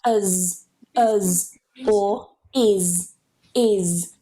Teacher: If we get one of these sounds plus that S, what you'll hear happen is instead of saying it as just a s or z, we actually add a schwa, or sometimes, depending on the person's accent, an I. So it will sound something like uz, or is.